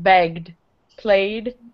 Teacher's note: Again, we're not adding a syllable. And you use the D sound when the sound before the ED is buzzy or voiced, buzzing, vibrating your throat. Voice sounds are B, G, Y, W, Z.